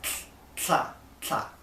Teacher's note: So you're going to keep the tip of your tongue glued to the top of your mouth, like for T, but it's going to stay there, and the air is going to go out the sides.